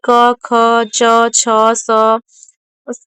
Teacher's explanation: अघोष वे ध्वनियां है जिनमें गले में कंपन नहीं होता।